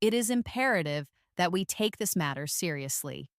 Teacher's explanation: With a lower, steady, more formal tone.